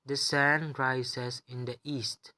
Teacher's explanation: since this is a declarative sentence, it is just stating fact, which falls under rising falling intonation pattern 2 3 1, and we place level 3 on the higher pitch or the term which is stressed.